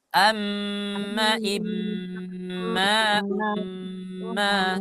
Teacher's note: Ma itu jangan terlalu panjang. Jadi yang lebih panjang adalah gunnahnya. Suara nah itu yang harus lebih panjang.